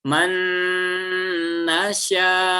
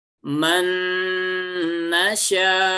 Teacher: Jadi perubahannya cepat dari hidung ke mulut, ya.